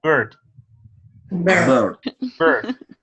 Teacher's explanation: Pay attention, no es una E. No la llevamos a la E, la llevamos al centro. La lengua tiene que moverse un poco al centro.